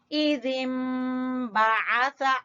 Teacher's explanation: ठीक है, इज़िम बाअसा, आइन को वस्ते हलक से अदा करेंगे और सा जबान की नोक और सामने वाले दो दांतों के सिरे · मीम की अदायगी किससे होती है? दोनों होंठों के मिलने से।